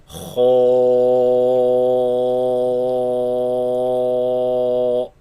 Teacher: The light letters, the sound is spilled out of the mouth. So the heavy sound, the sound is trapped in the mouth, producing an echo, such as pronouncing this one heavy letter, Kho, produces an echo in the mouth.